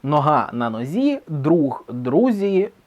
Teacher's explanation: дзь дуже швидко перейшов у зь.